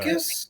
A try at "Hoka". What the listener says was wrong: Hoka. You said hocus. Like hocus pocus, but it's Hoka.